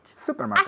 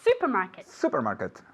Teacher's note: Supermarket. Accent on the first syllable.